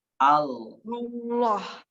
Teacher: Ujung lidahnya taruh di gusi. Allah. Jangan au.